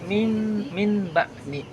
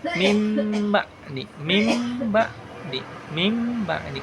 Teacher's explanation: Lafaz min ba'di itu harus dibaca dengan mim ba'di karena mengubah suara nun menjadi suara mim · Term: iqlab